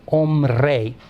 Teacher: So you get hombre, M-R, and then you need, this B develops as a sort of a buffer consonant between the M and the R